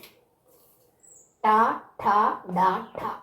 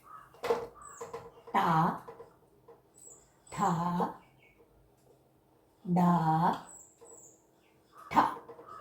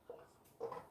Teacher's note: മൂർത്താവിന്റെ സഹായത്തോട് ഉച്ചരിക്കുന്നത് കൊണ്ട് മൂർധന്യാഹ എന്ന് അറിയപ്പെടുന്നു